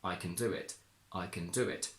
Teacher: can is a weak function word because it's only a modal verb and not a main one. So we don't stress it. We stress do. We say, I can do it.